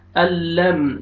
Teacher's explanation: میم ساکن کا اظہار ہے جلدی پڑھیں گے